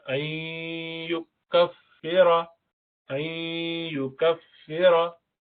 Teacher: Nun sakina followed by ya, and you do idgham there with gunna.